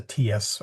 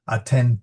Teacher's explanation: Latin ecclesiastical Latin doesn't make it that soft. It's a ts.